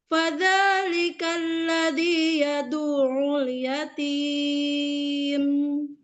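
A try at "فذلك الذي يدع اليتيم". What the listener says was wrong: Jangan yatim. Itu terangkat itu yatim. Fadzalikal ladzi yad'ul yatim. Turunkan. Sudah bagus yatimnya iramanya, tapi ain tasydidnya kurang tekan.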